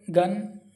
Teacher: G is a voiced velar and plosive sound.